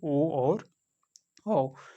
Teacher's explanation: कंठ और ओष्ठ से बोला जाता है, ओ और औ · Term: कंठोष्ठ वर्ण